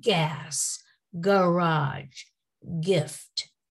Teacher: how the throat vibrates when the hard g is pronounced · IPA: /g/